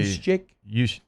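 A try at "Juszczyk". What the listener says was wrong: Like the J's not pronounced.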